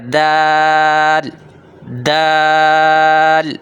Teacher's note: زبان کی نوک ثنایا علیہ کی جڑوں سے لگے